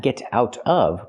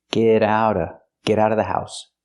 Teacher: We hear the T and get and the T and out pronounced as fast D's.